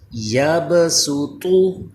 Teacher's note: اس پہلے کلمے کے اندر ہم سین کی آواز پڑھیں گے، یبسطو، با میں کلکلہ ہوگا، سین باریک پڑھیں گے اور طا حروف مستعلیہ ہے اس کو پر کریں گے